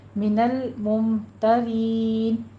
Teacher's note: من الممترین، لام ساکن رہنے دیجیے، اس کو حرکت نہیں دینی، ممترین میں میم ساکن کا قاعدہ اظہار شفوی کرنا ہے، اور آگے را باریک بھی ہے، یا مدہ کو ادا کرتے ہوئے مد عارض وقفی کریں گے، اس کو 6 کاؤنٹ کرنا ہے